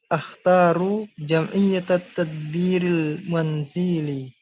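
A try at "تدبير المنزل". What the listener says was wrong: Ya, Z-nya panjang. Al-manzili. Jadi ini bacanya at-tadbiril manzili. Manzili langsung.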